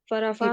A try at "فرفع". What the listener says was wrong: فرفع کھینچے گا نہیں نا. فرفع